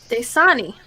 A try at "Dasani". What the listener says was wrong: I think you put the wrong emphasis on the wrong syllable.